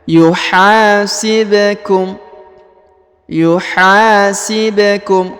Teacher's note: huruf ha dipanjangkan dua harakat karena di depannya terdapat Alif · huruf ba yang berharakat sukun maka dia dibaca pantul